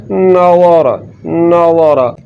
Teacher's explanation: तो ज़ा को पुर यानी कि मोटा करके पढ़ना है, क्योंकि ये हुरूफ मुस्तारिया में से है। तो हुरूफ मुस्तारिया वो हुरूफ जिन हरफ़ों में सिफ़्त इस्तिला पाई जाती है।